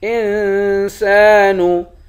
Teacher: سین کے بعد الف ہے، الف حروف مدہ ہے، اس کو ایک الف کے مقدار کھینچ کر پڑھیں گے۔ انسان، وَأَنَّا، حمزے کو نون سے ملا کر نون پر کھڑا زبر ہے، اس کو ایک الف کے مقدار کھینچ کر پڑھیں گے۔